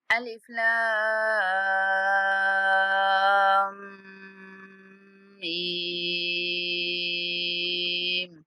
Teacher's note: हरूफ मुक़त्तआत है। लाम को 5 सेकंड तक खींचेंगे, मीम पर गुन्ना करते हुए मीम को 5 सेकंड तक लंबा करेंगे